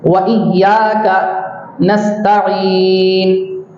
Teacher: یہاں عین کو حلق سے نکالنا ہے